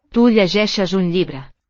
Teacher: note the palatalization of the L in book.